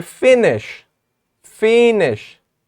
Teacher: lower the sound and fall it make it fall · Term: falling intonation